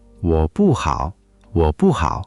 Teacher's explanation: For not good, we use 不 fourth tone, which means no or not.